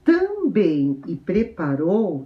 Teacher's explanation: as palavras também e preparou são oxítonas, são palavras oxítonas, porque a sílaba tônica é a última